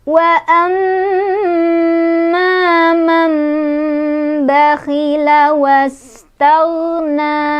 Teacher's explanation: Wa amma di sana ada gunnah musyaddadah karena ada mim yang bertasydid. Cara bacanya berdengung. Wa sampai kerasa ke hidung